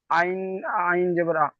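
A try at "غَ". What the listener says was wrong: আইন নয়, আইনের নোক্তা থাকে না। হ্যাঁ, গইন জাবার।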